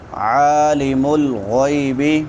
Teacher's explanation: عین وسط حلق سے اور اس کے اوپر کھڑی زبر ہے